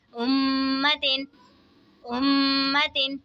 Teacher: मीम मुशद्दद में गुन्ना करके पढ़ेंगे, दो ज़ेर की तनवीन।